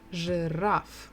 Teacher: two syllables the stress is on the final syllable